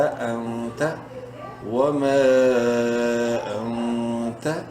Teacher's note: نون ساکن ہے اور اس کے بعد تا حروف حلقی میں سے نہیں ہے، اخفا کریں گے